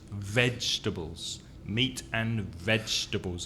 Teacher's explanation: The first syllable is stressed.